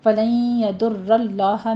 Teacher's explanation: نہیں کہنا، عقیبیہ یا لین ہے آگے، فلن یضر اللہ میں نون ساکن کا قاعدہ ادغام الغنہ کریں گے، 2 کاؤنٹ کرنے ہیں یہاں پہ